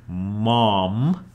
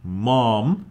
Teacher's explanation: the part of your mouth that's moving is mostly your lips